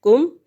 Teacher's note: اس کاف ٹنڈے والے کو باریک پڑھیں گے، کم۔ میم ساکن کے بعد میم اور با کے علاوہ کوئی بھی لفظ ہو تو اظہار ہوگا، اظہار شفوی اظہار ہوگا، ورنہ نہیں ہوگا۔